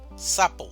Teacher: Mayor fuerza de voz, sa, sapo. Si el acento o la mayor entonación estuviera en la otra sílaba, diríamos sapó, pero no decimos sapó.